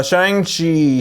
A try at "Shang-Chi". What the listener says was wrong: Shang-Chi, you pronounce the A like a U.